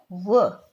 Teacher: दंत ओष्ठीय, यानी दंत प्लस ओष्ठ से बोले जाने वाला जो वर्ण है